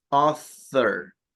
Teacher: usted está soltando aire, dejando un pequeño huequito entre la punta de la lengua y los dientes de arriba. No es una S, sino así.